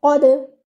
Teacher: That means you'll have to bounce your dal and take care of your qalqala, not to exaggerate it. Don't make it qadr, not like that.